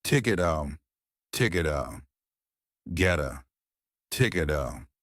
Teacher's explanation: because the T and the T are the same, we just have one